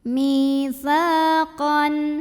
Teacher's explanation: Maka cara bacanya dipanjangkan sa-nya dua harokat saja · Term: mad tabi'i zahiri